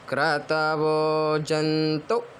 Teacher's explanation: तू को खींचना नहीं है। तू तू अपनी ओर बाहर ज्यादा देर तक के ना छोड़ के अपनी ओर खींचना है। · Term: छोटा ऊ की मात्रा